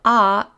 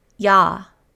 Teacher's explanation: If we take this base vowel ah and add a second leg to it, it gains a Y sound. Instead of ah, it's now ya.